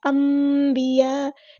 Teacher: میم کے لیے ہونٹوں کو بند کیا جائے اور پھر با کے لیے ہونٹوں کو جدا کیا جائے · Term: اقلاب